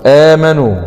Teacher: آمنوا، مد بدل، والمد البدل هو أن يأتي حرف المد بعد الهمز في نفس الكلم. في رواية حفص التي نقرأ بها يعامل معاملة المد الطبيعي، يعني يمد بمقدار حركتين